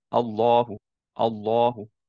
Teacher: back of the tongue elevated মুখটা round হয় নাই